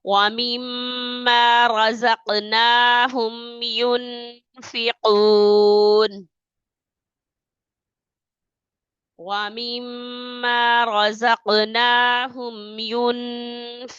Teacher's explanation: را کو موٹا کریں گے، نون پر اخفا کریں گے